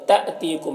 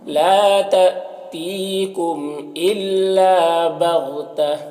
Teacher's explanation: یہاں پر حمزہ ساکنہ جھٹکا لگے گا